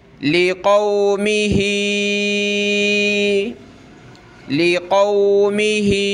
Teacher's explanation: کھڑی زیر ہے، نیچے کی طرف اس کو کھینچنا ہے، زیادہ کھینچنا ہے، اس سے مد ہے اس لیے زیادہ کھینچیں گے اس کو نیچے کی طرف۔